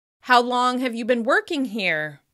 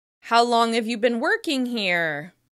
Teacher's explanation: The fall in pitch at the end signals that the question is finished so the other person can respond. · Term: falling intonation